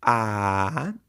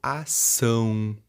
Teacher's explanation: aquela vocal em que o som dela não sai pela boca e sim pelo nariz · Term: nasalização